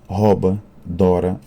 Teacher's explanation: Quando há monotongação desse ditongo no radical dos verbos, há a tendência a abrir a vogal, que passa a O, uma vogal aberta